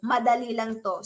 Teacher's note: tono o pitch ay pantay o pababa sa dulo.